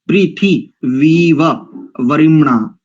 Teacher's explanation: वी को दीर्घ नहीं करेंगे, इकार यहां पर दोनों में ह्रस्व ही है।